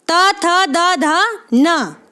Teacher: त वर्ग की जो ध्वनियां होंगी वो हमारी दंते ध्वनियां होंगी